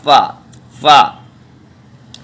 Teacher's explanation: ये ऊपर के दांत नीचे के होंठ से बनकर फा बनेगा